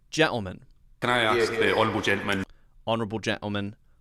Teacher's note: But remember, we skip over the T sound. So instead of gentleman, it's gentleman, because it's skipped.